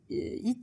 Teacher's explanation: notice the H in heat kind of disappears when you're doing it in a French accent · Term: the H goes away, The H goes away